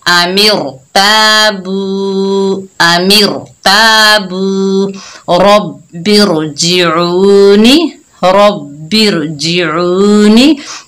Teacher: रा साकिन हो और उससे पहले दूसरे कलमे में जेर हो, तो हमने रा को पुर पढ़ना है, यानी मोटा पढ़ना है